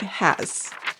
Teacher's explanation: Do you feel your mouth going down slightly? The pitch goes down slightly toward the end of the word. And that's because the Z at the end of has is a fricative, a type of consonant that involves forcing air through a narrow space, and it causes gradual energy loss.